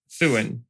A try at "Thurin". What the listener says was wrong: Thurin. Yes, you do have to roll the R. That is how it is pronounced.